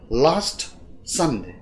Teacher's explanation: lost sun là hai trọng âm đầu tiên, thì ở giữa lost và sun không có âm tiết không có trọng âm nào, tức là âm tiết trọng không có trọng âm bằng zero, unstressed bằng zero.